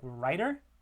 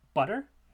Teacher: they're written with T sounds, but the sound that's actually being produced is a flap or a tap · when you tap or flap the tongue to the alveolar ridge, like in the middle sound of a word like writer, or in the word butter, so those are normally spelled with T sounds in English writing, orthography, spelling. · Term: flap or tap